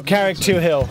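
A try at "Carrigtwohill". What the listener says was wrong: It's not a hill. You don't pronounce the H, I don't think.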